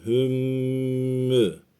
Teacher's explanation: cezimli mimden sonra mim, cezimli nundan sonra nun geldiği vakit bunları hem şeddeliyoruz hem de 1,5 saniye tutuyoruz. İdğam, miste mail gunni oluyor bu.